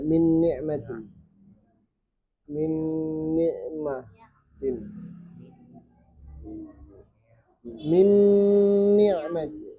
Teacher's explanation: Nun yang pertama sudah hilang. Nun yang kedua yang dibaca jelas.